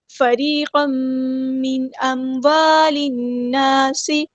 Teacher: لام یہاں پہ لام شمسی ہے، اس کو ہم ظاہر نہیں کریں گے